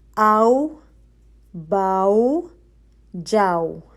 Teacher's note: آؤ، واؤ ساکن ہے، اس سے پہلے حمزہ پہ زبر ہے، آؤ، باؤ، جاؤ، ٹھیک ہے، یہ بھی 2 کاؤنٹ ہی ہوتے ہیں۔ جب آپ پورا منہ کھول کے واپس واؤ کے اوپر آپ اپنا لپ راؤنڈ کرتے ہیں واؤ کے مخرج پر، تو آپ 2 کاؤنٹ آپ کا ہو جاتا ہے، ٹھیک ہے۔ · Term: لین